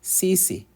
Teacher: both the short and the long sound is the same for Swahili letter I, which is E. So you get that E sound.